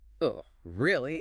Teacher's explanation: Flat, dead, no emotion. The pitch drops at the end. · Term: dropping pitch